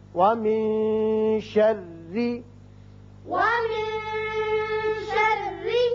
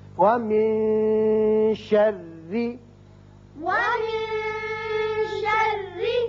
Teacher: یہاں نون کے بعد شین حروف اخفا میں سے ہے لہذا یہاں اخفا ہوگا۔ وَمِن شَرِّ، ومن شر اور را باریک بھی پڑھیں گے اس لیے کہ نیچے زیر ہے.